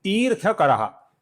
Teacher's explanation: ती दीर्घ है इसका हमें ठीक से लंबाई से ही उच्चारण करना है।